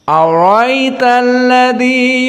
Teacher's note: Di saat bertemu dengan hamzah, ara'aita, maka dihapuskan hamzahnya. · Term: hadfil hamzah